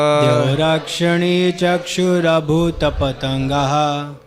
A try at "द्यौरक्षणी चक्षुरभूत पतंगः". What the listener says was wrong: अभूतो नहीं अभूत पतंगः ना, ध्यान से बोलिए। द्यौरा नहीं है, द्यौर। द्यौरक्षणी चक्षुरभूत पतंगः,